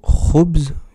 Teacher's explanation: Il faut racler légèrement la gorge pour pouvoir dire le Kha.